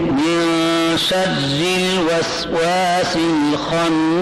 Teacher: یہاں الوسواس الخناس، یہاں پر بھی ال آیا ہوا ہے لیکن یہاں لام پڑھا جا رہا ہے، ال کا لام پڑھا جا رہا ہے کیونکہ ال کے لام کے بعد ابغ حج کا وخف عقیمہ میں وہ اوخا آئے ہیں تو لہذا یہاں اظہار قمری کی مثال دے رہے ہیں اور پہلے مطارق النجم میں ادغام شمسی کی مثال ہے.